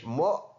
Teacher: بچے بسا اوقات غلطی کرتے ہوئے پڑھتے ہیں موک، کاف کی طرف لے کے جاتے ہیں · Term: حمزہ کی آواز